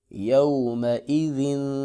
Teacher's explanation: یا زبر واو یو، میم زبر ما، یوم، حمزہ زیر ای، یوم ای، ذال دو زیر زن، یوم ایذن۔ ذال کو نرمی سے ادا کریں گے، زا کی طرح نہیں پڑھیں گے اور نہ ہی ضا کی طرح موٹا کریں گے، بلکہ اس کو نہایت نرمی سے ادا کریں گے۔